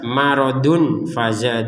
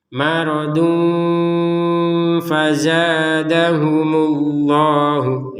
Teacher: Nun mati bertemu fa atau tanwin bertemu fa. Jadi, dua-duanya dibaca dengan samar.